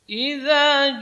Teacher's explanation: za keluar dari ujung lidah, bersentuhan dengan ujung gigi seri atas. Idza jelas, jadi bunyinya jelas. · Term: huruf rakhawah